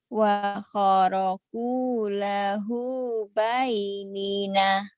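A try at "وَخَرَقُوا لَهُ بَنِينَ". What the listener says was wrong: Bukan baik tapi bani banina. Wa kharaqu lahu banina. Wa kharaqu lahu banin.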